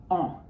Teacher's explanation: En is just a tall a sound, but again with some nose involved. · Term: nasal vowels